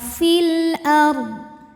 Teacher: Alif lamnya dinamakan dengan alif lam qamariyah karena alif lam menghadapi huruf qamariyah yaitu hamzah, maka lam dibaca dengan jelas. Fil ard. Huruf ra dibunyikan secara tafkhim karena huruf sebelumnya fathah, maka bacanya tebal.